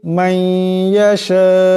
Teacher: নুন সাকিন, নুন সাকিনের পরে ইয়া আসছে, ইদগাম হয়ে যাবে